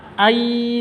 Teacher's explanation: Nun mati bertemu dengan ya. Cara bacanya masuk ke ya, ai seperti itu, disertai dengung 2 ketukan. Karena idgham bi gunnah.